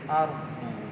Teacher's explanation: pinggir lidah kita itu yang nempel ya ke bagian sisi ya langit-langit itu ya, di sekitar gigi itu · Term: dot